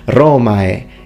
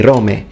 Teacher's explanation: He uses the full diphthong, Romae. He doesn't say Rome.